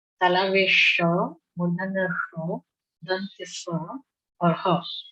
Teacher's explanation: इन चारों वर्णों का उच्चारण करते हुए आपके मुख से ऊष्म वायु का निस्सरण होता है, ऊष्म वायु निकलती है। इसलिए इनको हम ऊष्म कहते हैं।